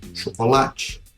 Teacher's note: Chocolate é uma palavra paroxítona em português, ou seja, a penúltima sílaba é a mais forte.